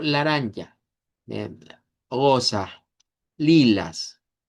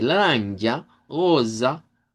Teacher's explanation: Eh, las o se pronuncian como u, las as se pronuncian con a centralizada · Vea, porque si yo lo digo con la A del español, digo laranja, eh, rosa, lilas. Pero cuando lo decimos con la A centralizada, le da otro enfoque, le da en una entonación diferente